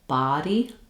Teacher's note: my jaw is more open and my tongue is more pushed down. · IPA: /ɑ/